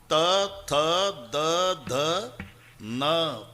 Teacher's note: जेव्हा संबंध दाताशी येतो ते दंते आहे. तथ दध न, किती ताकद लावून धक्का मारते जीभ आतून दाताला. त थ द ध न, पूर्ण लाईन हे दंते आहे.